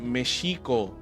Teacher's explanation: was sex man as initially transcribed by Spanish Friars in Spanish the letter X used to be pronounced as a voiceless post alveolar fricative identical to the diagraph sh in English